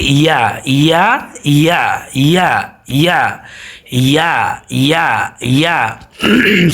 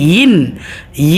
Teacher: ইয়াটা উচ্চারিত হয় জিহ্বার মধ্যখান থেকে। তাহলে ইয়া ইয়া জিহ্বার মধ্যখান, ইয়া ইয়া দুই জের ইন, ইন মধ্যখান থেকেই উচ্চারিত হবে।